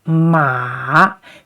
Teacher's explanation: this is the third tone. So down and uphill